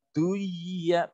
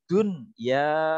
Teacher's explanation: non mati atau tanwin ketemu 4 huruf tadi dalam satu kata, membacanya justru jelas, namanya izhar wajib